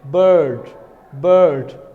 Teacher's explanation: So this r is present. Rhoticity, this is the rhotic accent.